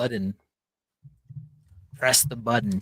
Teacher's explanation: It's a very soft tap T is what I call it.